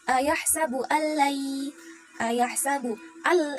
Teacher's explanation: al itu termasuk ke dalam idgham bila gunnah karena ada tanwin, hukum nun sukun atau tanwin bertemu dengan lam dibaca masuk tanpa mendengung.